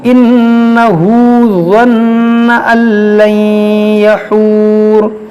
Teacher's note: یہ نون مشدد ہے, یہاں پر بھی نون مشدد ہے, اس میں غنہ کریں گے